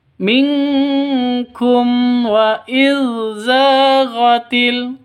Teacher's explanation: Za panjang dua ketukan karena ada Alif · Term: Mad asli